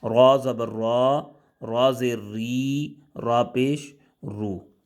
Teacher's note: را پر زبر یا پیش آ جائے تو را کو پر پڑھیں گے، اور را کے نیچے زیر آ جائے تو را کو باریک پڑھیں گے